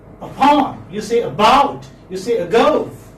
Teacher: So we are in fact giving stress on the second syllable.